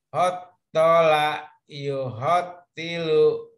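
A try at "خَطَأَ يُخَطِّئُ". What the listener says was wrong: Hotola ini alif Bapak, bukan alam. Hotoa Bapak. Hotoa yuhotiu.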